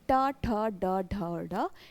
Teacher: जीभ उल्टी होकर जिसमें तालु को स्पर्श करती है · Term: मूर्धन्य व्यंजन